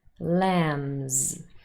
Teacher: Now in this last word, lambs, it looks like it ends in b, which would also be voiced, of course. However, the b here is silent.